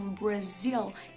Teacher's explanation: aquele R é sempre pronunciado como se fosse caipira